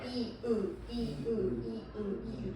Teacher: 이으 이으 이으 이으 혀가 나왔다가 들어갔다가 하죠.